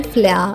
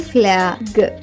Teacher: కాబట్టి ఎఫ్ఎల్ యొక్క శబ్దం ఫలా కాకుండా ఫ్ల అవుతుంది